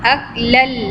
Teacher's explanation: أَكْلَ lamma idgham, we'll join lam do zabar lan. We'll not say lam do zabar lan, we'll join lam with lam. That will become aklal, lam lam do zabar lal.